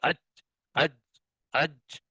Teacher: سانس بھی رک گیا اور آواز میں بلندی بھی ہے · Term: صفت قلقلہ